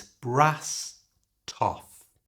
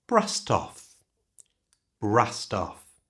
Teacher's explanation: Notice that this word brassed ends in an ED, but that ED is pronounced with a T sound, brassed. And we can connect that to the off by moving that T sound to the front of the O. So it's brass toff.